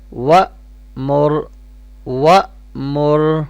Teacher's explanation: را بھی بولڈ پڑھیں گے کیونکہ را کے پہلے والے لیٹر کے پاس ضمہ ہے